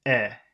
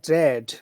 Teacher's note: it's a very simple sound, but it's just long because of the D.